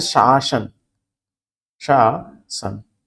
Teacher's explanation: तालव्य सा, फिर दंत से सा